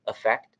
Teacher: they are pronounced the same way with a schwa in the first syllable